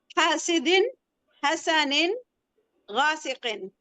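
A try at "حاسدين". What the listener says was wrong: Very good.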